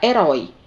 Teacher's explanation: Herói é uma palavra oxítona, porque a sílaba tônica é a última. Essa palavra, ela tem o ditongo aberto oi na posição de oxítona, então ela deve ser acentuada.